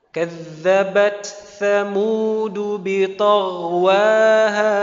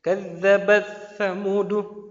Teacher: ta sukun setelahnya tsa ya kadzabat tsamudu. Jadi t-nya kita selesaikan dulu